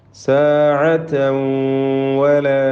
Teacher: തൻവീനിനെ ശേഷമുള്ള വാവിൽ ലയിപ്പിച്ച് മണിക്കണം. ഇദ്ഗാം ബിഗുന്ന.